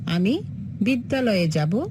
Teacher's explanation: বিদ্যা এর আ ধ্বনি এবং আলয়ের আ ধ্বনি মিলে গেছে